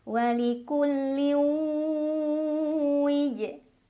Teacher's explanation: huruf qalqalah yaitu jim yang sukunnya sukun asli dan berada di tengah-tengah bacaan. Maka cara membacanya dipantulkan dengan pantulan yang kecil. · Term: qalqalah sugro